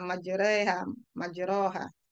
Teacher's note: Bismillahi majreha itu kan tarik-menarik antara fathah dengan dengan kasrah ya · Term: imalah